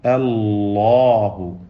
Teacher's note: അല്ലാഹു എന്നതിന് തഫ്ഖീം കൊടുക്കുക